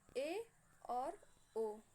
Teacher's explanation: ऐसे स्वर जिनके उच्चारण में हमारा मुख गोले के समान बंद ना रहकर आधा बंद रहता है, ऐसे स्वर को हम लोग अर्ध समृद्ध कहते हैं। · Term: अर्ध समृद्ध स्वर